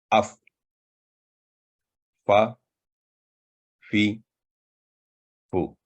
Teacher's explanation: فا، یہ باریک آواز والا لیٹر ہے، ترقیق لیٹر کہتے ہیں اسے، اور یہ حروف شفویہ یعنی ہونٹوں سے ادا ہونے والا حرف ہے۔ اوپر والے دانتوں کو نچلے ہونٹوں کے تر حصہ پر لگانے سے حرف ادا ہوتا ہے